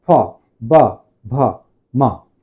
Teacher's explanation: हमारे ऊपर और नीचे दोनों का होष्ठ, होठ ऊपर और नीचे वाला भाग जब तक आपस में स्पर्श नहीं होगा, जुड़ेगा नहीं, तब तक इन वर्णों का उच्चारण नहीं होगा। जैसे बोलिए प जुड़ रहा है, फ, ब, भ, म।